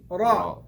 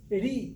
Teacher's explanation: Could be heavy, could be light. Ra with Fatha is heavy. With Kasra is Ri, light. I don't say Ri, I say Ri, smiley, Ri.